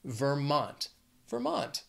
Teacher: also two syllables but the stress is on that second syllable